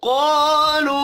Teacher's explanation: क़ाफ़ हुरूफ मुस्तअलिया है, पुर पढ़ा जाएगा। अलिफ मद्दा और वाव मद्दा एक एक अलिफ के बराबर खींच कर पढ़ेंगे।